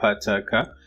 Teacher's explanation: they have a total blockage and stricture with a sudden release, which has to be a vowel.